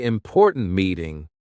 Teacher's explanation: with a sharp T at the end of important